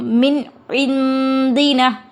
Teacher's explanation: نون ساکن کے بعد عین آیا ہے، اظہار کا حروف، حلقے کا حروف ہے، یہ اظہار کا قاعدہ ہے، نون کی آواز کو ظاہر کر کے پڑھیں گے